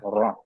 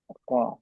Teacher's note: huruf ro keluar dari ujung lidah bertemu gusi atas